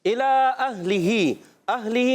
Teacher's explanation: ہا کو کلیئر کریں گے. حمزہ اور ہا حلق کے نیچے والے حصے سے ادا ہوتے ہیں · اہلہ میں حمزہ کو ہا سے ملانا ہے. ہا کو کلیئر کریں گے.